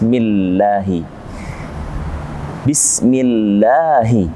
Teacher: Bismillahi. Ini ada kalimat lamul jalalah atau Allah diawali dengan mim kasrah. Mi, maka dibaca tipis.